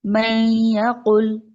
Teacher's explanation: نون کو ہم یا میں مرج کر رہے ہیں کہ نون کی ساؤنڈ باقی ہی نہیں رہی · نون کو ہم مرج کر رہے ہیں آگے یا میں، اس طرح سے کہ غنہ کے ساتھ، اور نون کی ساؤنڈ باقی تھوڑی سی رہتی ہے، لیکن نہیں ایگزیکٹ ہم نون کو نہیں پڑھتے، من نہیں پڑھتے۔ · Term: ادغام